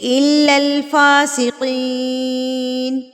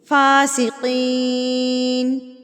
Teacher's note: فا کا زبر فا ہوتا ہے, اس کو ہم 1 حرکت کے برابر کھینچتے ہیں. اور قین کو بھی کھینچیں گے کیونکہ یہاں پر یا مدہ ہے, یا سے پہلے زیر ہے تو اس کو ہم کھینچیں گے.